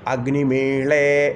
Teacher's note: ഋഗ്വേദത്തിലാണ് ഈ പറയുന്ന ഡാ അക്ഷരത്തെ ള അക്ഷരമായിട്ട് ഉച്ചരിക്കുന്നത്. ഡായും ഢായും ള ള എന്ന 2 അക്ഷരങ്ങളായിട്ട് ഉച്ചരിക്കുന്നു.